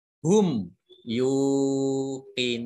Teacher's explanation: ya domah wawu sukun dibaca panjang 2 harokat, bacaan mat tobi'i